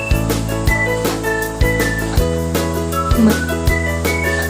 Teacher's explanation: Ito ay ang hangin ay hinaharang sa bibig ngunit pinapayagang lumabas sa ilong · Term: pailong o nasal